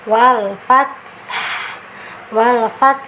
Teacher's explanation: Walaupun dia sukun kita harus ada vokalnya nah vokalnya itu sesuai dengan makhraj ya dia ada di tenggorokan bagian tengah